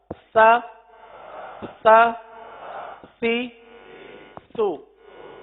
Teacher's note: زبان کا سرا اوپر کے دانتوں کے اندرونی کنارے پر لگ کر نیچے آ رہا ہے